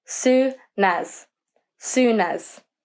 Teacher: pretend the consonant n has jumped from the end of soon to the beginning of as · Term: consonant vowel technique